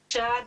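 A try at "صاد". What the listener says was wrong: ساد نہیں، ساد ساد. پھر وہی سی ٹی کیٹ والا فارمولا لگائیے. تو شا تو بالکل نہیں ہونا چاہیے.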